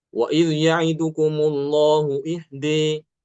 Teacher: Kemudian contoh berikutnya, wa idz ya'idukumullahu ihda. Ihda itu kalau berhenti baru imalah ya.